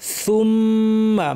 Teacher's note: মিমের উপর তাসদিদ লম্বা গুন্না।